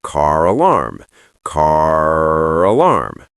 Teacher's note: We are rodic speakers. If I say car, you hear the R. So for us, linking with R is easy. We just use the R that's already there.